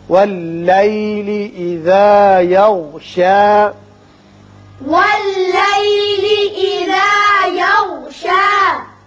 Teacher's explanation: غین کو ذرا پر کر کے پڑھیں گے. وقت کی صورت میں یہ شا ہی رہے گا، وصل کی صورت میں بھی شا رہے گا، ایک الف کے برابر.